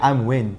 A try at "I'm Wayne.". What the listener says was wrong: Wayne gak gini, Wayne lebih rendah lagi. Jangan dipaksa, agak terlalu mengada-ngada ya.